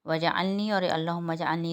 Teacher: وجعلنی اور اللہم اجعلنی دونوں میں جیم جو ہے وہ ساکن حالت میں آ رہا ہے، جیم کے اوپر جزم آ رہی ہے۔ جب جیم کے اوپر جزم آئے تو اس پر قلقلہ ہوگا، کیونکہ جیم حروف قلقلہ میں سے ہے، اور حروف قلقلہ جب ساکن ہوتے ہیں تو ان کے اوپر آواز کو پلٹایا جاتا ہے، یعنی قلقلہ کیا جاتا ہے، ٹھیک ہے۔